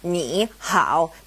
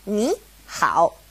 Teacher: when two third tones are side by side, the first one becomes a second tone